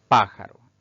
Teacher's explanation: son palabras cuya sílaba tónica o mayor fuerza de voz recae sobre la antepenúltima sílaba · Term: palabras esdrújulas